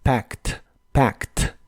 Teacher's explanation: La A se pronuncia como una combinación del sonido E y el sonido A, y la ED del final se pronuncia como una T